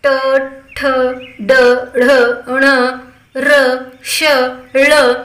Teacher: यांचा उच्चार करत असताना मुखाचा भाग आपला मूर्धा येतो आणि वर्णाचं नाव मूर्धन्य आहे. मूर्धन्य म्हणजे काय नेमकं, तर कंठ आणि टाळू यांच्या मधील जी जागा असते त्यालाच मूर्धा असं म्हणतात.